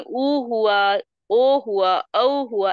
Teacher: इसमें एक लिमिटेड हमारा मुंह खुलता है, इसमें गोल बनता है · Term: वृत्त